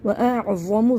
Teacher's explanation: عند اللہ ہوا خیرًا واعظم، حمزہ کو عین سے ملا کے پڑھیں گے حلق کو بند کر کے. واعظم، وا کو موٹا پڑھنا ہے، واعظم زبر ہے یہ